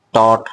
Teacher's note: পরের পাশটা মূর্দা থেকে উচ্চারিত হয় এই মুর্দা থেকে উচ্চারিত হওয়ার কারণে ট ঠ এগুলাকে বলা হয় মূর্ধন্য ধ্বনি